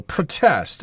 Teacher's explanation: verb is pronounced the same in American English although I believe in British English they will stress the second syllable